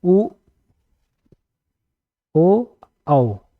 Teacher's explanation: होंठ मेरे दोनों होंठ मिल रहे हैं तो एक गोला जैसे बना रहे हैं, इसको बोलते हैं वृत्ताकार स्वर।